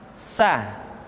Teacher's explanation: berikutnya Hai huruf Hai diucapkan sebagaimana kita mengucapkan huruf sah yaitu ujung lidah di antara dua gigi seri kita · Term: huruf tsa